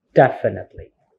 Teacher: upper strips right there means that that is the stress so the stress here is in the first syllable